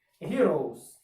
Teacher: с звучить більше як з